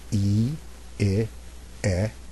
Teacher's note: again the jaw drops a little bit more for E so if I do vowels 1 two and three I go e i e and each time my mouth opens a little bit more